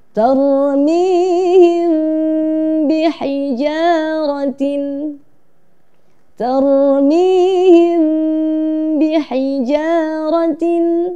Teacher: kita baca ikhfa syafawi dengan mengatupkan bibir, sedikit renggang dan disertai dengung.